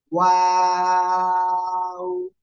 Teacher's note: দুই ঠোঁট গোল করব, শুরুতেও গোল, মাঝখানে দুই দিকে প্রসারিত হবে, শেষে আবার গোল হবে